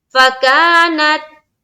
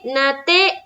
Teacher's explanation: تا ادا ہوتے ہی ساؤنڈ بند، تا ادا ہوتے ہی آواز بند